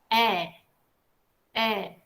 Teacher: ketika lidahnya agak sedikit menurun tapi masih di tengah-tengah ya maka suara yang muncul adalah eh